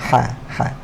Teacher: Huruf ha sebut makhraj dia di tengah-tengah kerongkong. Ha ni berkongsi makhraj huruf ataupun berkongsi tempat kalau huruf dia ni dengan huruf ain. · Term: ha pedas